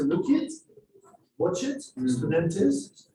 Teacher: Uzbek doesn't really like too many consonants taken together. They want to break this with vowels.